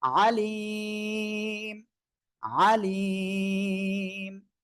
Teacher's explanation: এক আলিফ মদ এর পরের হরফে এখানে থেমে গেলেই তিন আলিফ টেনে পড়তে হবে